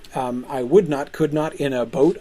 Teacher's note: That's iambic. Unstressed, stressed, unstressed, stressed.